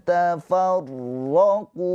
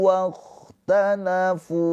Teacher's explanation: Tafarraqu wakhtalafu. Kho mempunyai sifat rokhoah ya, mengalir suaranya.